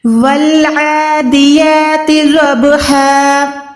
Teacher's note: واو کو ہم نے ڈائریکٹ الف لام کے ساتھ ملانا ہے، یہاں پر الف کو چھوڑ دینا ہے کیونکہ الف پہ کوئی بھی نشانی نہیں ہے